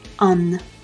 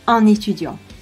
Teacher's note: Before a vowel or a silent h, un is pronounced /œ̃n/.